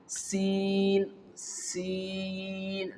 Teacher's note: The sound is not blocked, okay, and the sound is not strong. It is light, soft and smooth during the pronunciation of the letter sin.